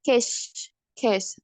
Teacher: Walaupun ada suaranya dikit tapi setelah suara itu angin semua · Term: voiceless